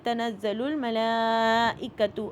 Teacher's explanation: اب لام کے اوپر دیکھیے، لام کے اوپر کھڑا زبر ہے اور مد ہے. کھڑا زبر 2 کاؤنٹ ہوتا ہے اور اس کے اوپر 4 کاؤنٹ کی مد ہے، یعنی کہ لام ہم 6 کاؤنٹ تک کھینچیں گے